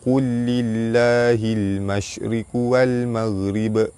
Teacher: Baris bawah bertemu lam jalalah dibaca, lam jalalah dibaca nipis · huruf lam mati bertemu dengan lam, hukum dia idgham mutamathilain